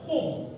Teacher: Semasa menyebut hurufnya sebahagian besar daripada pangkal lidah terangkat ke langit. Cuba angkat lidah masing-masing ke langit. · Terangkat sebagian besar daripada pangkal lidah ke langit-langit mengakibatkan bacaannya ditebalkan. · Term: huruf al-isti'la, al-isti'la